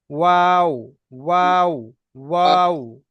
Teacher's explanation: ওয়াওটা উচ্চারিত হবে মুখটা গোল করে। এটা ঠোঁটের, দুটো ঠোঁটের অংশকে মিলিয়ে পড়তে হবে ঠোঁটটা গোল করে।